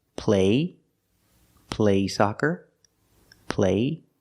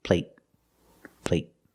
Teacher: the stop T at the end makes the long A a little shorter.